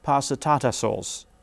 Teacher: you feel you hear the pitch movement going down but within this melody you also have a rhythm past the